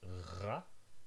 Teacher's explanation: There's ra, which is the back of your tongue having contact with the uvula. So those are trills, where there's repeated and quick contact.